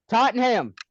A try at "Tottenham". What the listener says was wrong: Also Tottenham. There's no H.